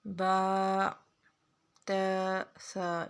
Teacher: ان تینوں لفظوں کو ایک الف کے برابر کھینچنا ہے